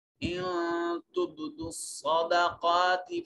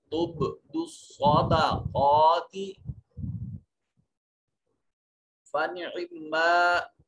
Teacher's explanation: صاد حروف مستعلیہ میں سے ہے، موٹا اور پر کر کے مفخم انداز میں پڑھا جائے گا۔